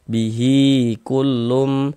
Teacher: hi kita baca panjang, mad silah qasirah atau mad silah sughra panjangnya 2 harokat